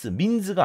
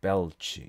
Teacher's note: 유성자음 다음에 무성자음이 오고 있어요. 민스가 아니고 그렇죠.